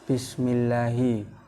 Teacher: ayat pertama Bismillahi hukumnya tarqiq karena ada lam Jalalain didahului kasroh cara membacanya lafadz Allah dibaca tipis